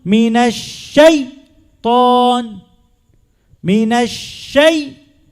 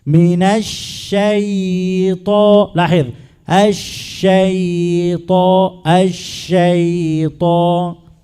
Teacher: الياء رخو، فلا نجعل الياء شدة، لا نقطع الصوت من الياء.